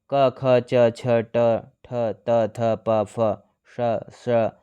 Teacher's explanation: अघोष वर्ण इन वर्णों के उच्चारण में स्वर तंत्रियां आपस में नहीं मिलती, जिसके कारण वायु आसानी से बाहर निकल जाती है। प्रत्येक वर्ग का पहला और दूसरा व्यंजन अघोष है।